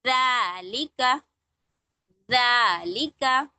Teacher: अपनी tip of the tongue को अपनी टीथ से लगाएंगे या थोड़ा सा हल्का सा बाहर करेंगे